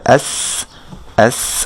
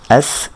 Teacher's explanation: সিনের সাউন্ডটা একেবারে তীক্ষ্ণ একটা বাতাস সহকারে এটা উচ্চারিত হবে।